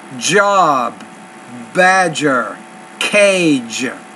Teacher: the front and sides of the tongue contact the alveolar ridge anteriorly and laterally